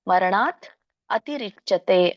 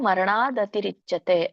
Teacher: ಸೊ ಹಾಗೆ ಕೂಡಿದಾಗ ತ ಇದ್ದುದು ದ ಆಗುತ್ತೆ. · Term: ಸಂಧಿ